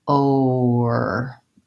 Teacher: when I'm doing it really slowly, there's almost like a little W sound in between.